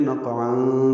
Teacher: قاف ساکن ہے، اس پہ قلقلہ ہے